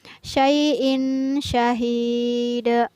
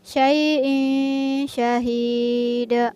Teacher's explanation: ada tanwin yang bertemu dengan huruf shin. Tanwin bertemu dengan huruf shin, maka tanwinnya dibaca samar atau tidak boleh dibaca jelas.